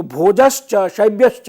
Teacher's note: च के बाद परे रहते विसर्ग को तालव्य श हो जाता है